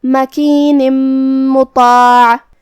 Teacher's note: ادغام کا معنی ہے حرف کو حرف میں داخل کرنا. تو ہم یہاں تنوین کو میم میں ملا کے غنہ اور تشدید کے ساتھ یہ حکم کو ادا کریں گے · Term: ادغام بغنہ